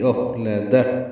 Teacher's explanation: سے ملانا ہے، خوا پر پڑھیں گے، لام جلدی پڑھیں گے، دال کو ہا سے ملا دیں گے وقفاً، اور اس پہ ہمس ہوگا، دال ساکن پہ سانس جاری رہے گی